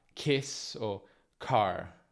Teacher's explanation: Come P e T, le altre consonanti occlusive, anche la K in inglese è spesso aspirata.